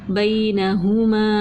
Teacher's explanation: جزم والا حرف تھا، نرمی سے پڑھا، نون پہ زبر تھی نرمی سے، پیش تھی نرمی سے، الف مدہ تھا ایک الف کے برابر کھینچ کے پڑھا